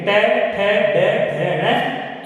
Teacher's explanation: जिन वर्णों का उच्चारण करते समय हमारी जीभ दांतों के खुरदरे भाग को स्पर्श करती है उसे मूर्धन्य वर्ण कहते हैं।